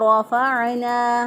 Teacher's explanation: आइन को वस्ते हलक से अदा किया।